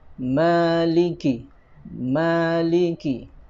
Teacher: Pertama, di ayat yang keempat ini ada mad tabi'i pada lafadz mim, ya. Di sini ada mad tabi'i, bacanya 2 harokat atau ukurannya 1 ayunan.